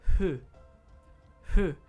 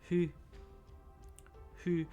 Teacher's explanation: they don't put their like lip to their tooth to go f they go H H their their lips never come to their teeth it's almost like an H sound it's like halfway between an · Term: Japanese F sounds